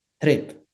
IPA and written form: tɾip (trip)